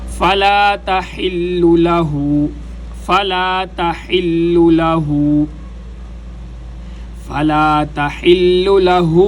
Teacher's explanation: فَإِن طَلَّقَهَا فَلَا تَحِلُّ لَهُ فَلَا تَحِلُّ یہاں پر بھی تحلّ، بعض حضرات اس کو تحلّ پڑھ دیتے ہیں جو کہ غلط ہے، یہاں پر کوشش کی جائے ہا کو گلے کے درمیان سے نکالا جائے۔